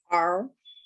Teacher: American R is pulled back and it's held tensely.